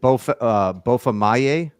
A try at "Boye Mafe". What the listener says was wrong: Boye. Boye Mafe. You had the Y.